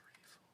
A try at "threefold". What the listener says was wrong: Yeah, it's threefold, not treefold. 3 as in the number 3.